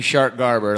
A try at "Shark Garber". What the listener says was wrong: I know when you say that, it sounds like you're saying Shart Garber.